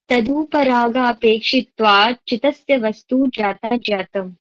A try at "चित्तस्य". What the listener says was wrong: दरअसल चित्तस्य नहीं बोलना इसको, चित्तस्य। इस चित्त में ना डबल त है।